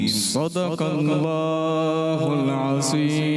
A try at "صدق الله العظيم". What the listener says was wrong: عظیم نہیں، عظیم کریں گے تو ضا زا سے بدل. صدق اللہ العظیم.